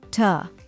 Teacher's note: The third syllable is a short, unstressed tuh sound, as in the word tub.